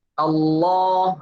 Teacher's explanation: Karena istifal itu lidah kita tidak terangkat. Pangkalnya tidak terangkat.